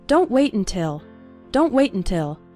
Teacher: when speaking fast the first syllable of until is barely pronounced